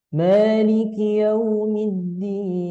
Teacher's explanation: Ayat yang keempat, kita pakai nada turun. Kemudian di ujungnya ada variasi.